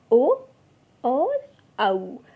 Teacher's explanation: कंठ और होठ से जो उच्चारित होते हैं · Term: कंठोष्ठ